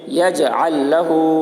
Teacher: وَلَمْ يَجْعَلْ لَهُ عین کے اوپر زبر ہے، زبر کو جلدی پڑھیں، تھوڑا بھی نہ کھینچے. یجعل لہ لام کے اوپر جزم ہے، بعد والے حرف پر تشدید ہے، اس لیے جزم والے حرف کو نہ پڑھیں گے بلکہ تشدید والے حرف کے ساتھ ملا کر پڑھیں گے